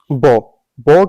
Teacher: ब ब क्या है ओट है बस ओट से बोला जाएगा अल्प प्राण बिल्कुल अल्प प्राण है घोष वर्ण भी है